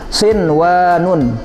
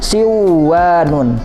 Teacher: bacanya nanti harus dibaca jelas tidak boleh di idghomkan tidak boleh dibaca dengung